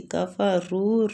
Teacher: کفروا را کو دوما کی وجہ سے پور پڑیں گے اور وہ مد بھی ہو رہی ہے